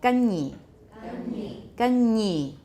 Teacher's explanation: palatal sounds like nya, like you've got a y sound after it.